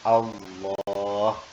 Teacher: lafaz Allah ini dibaca tafkhim karena didahului harokat fathah. Jadi Allah.